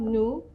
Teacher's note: We don't pronounce the last letter, the S.